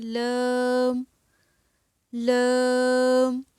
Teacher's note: اور اس کے بعد ہے زبان کی کروٹ۔ زبان کی کروٹ کے آخر سے نوک تک کا حصہ جب اوپر کی ایک داڑھ اور دانتوں کے مسوڑوں سے لگے تو یہاں سے ادا ہوگا